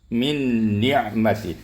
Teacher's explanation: nun bertemu dengan nun di situ ada tasdid maka dibaca dengan kamil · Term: Idgham kamil bighunah